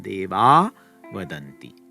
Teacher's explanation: The next word starts with either a vowel or a voiced consonant. Then you drop the Visarga and it just stays as a long ah.